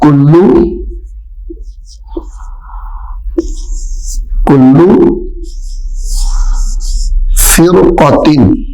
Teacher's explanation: را ساکن ہے اور اس سے جو آگے والا حرف ہے، جو را سے اگلا حرف ہے وہ حروف مستعلیہ میں سے ہے، را موٹا ہو جائے گا